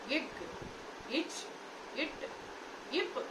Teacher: மூச்சுக்காற்றானது ஒலிப்பானால் ஒரு இடத்திலே தடை செய்யப்படுகின்றது மீண்டும் வெடிப்போடு வெளிவருகின்றது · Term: வெடிப்பொலி